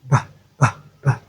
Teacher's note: there will be vibration in your throat when you say b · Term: bilabial plosive sound